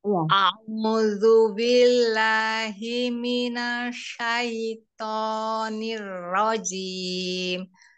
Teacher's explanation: Shinnya itu dia tafasi menyebar, tapi lidahnya dirilekkan gitu, jangan diangkat.